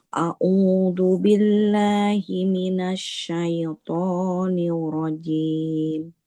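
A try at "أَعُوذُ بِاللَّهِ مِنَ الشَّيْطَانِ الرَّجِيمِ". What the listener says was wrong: Jangan a'udzu billah. Huruf zal ujung lidahnya tempelkan ke ujung gigi seri atas. Zu.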